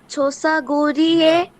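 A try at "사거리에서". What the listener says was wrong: না, একত্রে কেন লাগাচ্ছেন? মাঝখানে একটা স্পেস আছে, মানে আপনি এখানে একটু দম নিয়ে পড়বেন।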